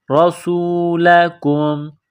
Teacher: را کے اوپر زبر ہے، را کو موٹا کرنا ہے